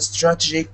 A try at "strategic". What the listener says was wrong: Make sure you pronounce every syllable. So instead of strategic, we want to hear strategic. Strategic.